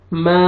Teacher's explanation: میم فتحہ الف ما، الف سے پہلے فتحہ الف مدہ، میم کو آپ نے کھینچنا ہے